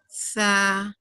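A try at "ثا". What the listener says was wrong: نہیں سا نہیں, نہیں, سا کا مخرج یہ نہیں ہے.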